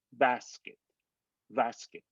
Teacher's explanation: if you were to do an actual b it is only the barest touch and the only difference between the b and the v is just the slight touch of the lips